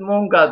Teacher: A'ları U şeklinde, bu şive farkıdır